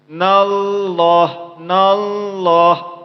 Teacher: Berarti lafaz Allahnya dibaca dengan tebal karena dia ialah ada fathah sebelumnya.